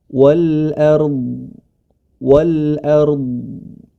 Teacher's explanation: huruf Dod tebal huruf ro pun tebal